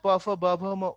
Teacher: এগুলো ওষ্ঠে উচ্চারণ হয়, এর জন্য এদের নাম হচ্ছে তোমার ওষ্ঠ বর্ণ